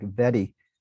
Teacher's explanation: a tap Type R we have in say The British pronunciation